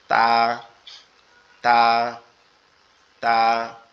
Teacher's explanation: আমাদের জিহ্বার আগা উপরের দুই দাঁতের গোড়ার সঙ্গে লাগবে